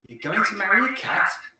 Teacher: Notice the intonation must go up at the end because we want to show surprise or disbelief.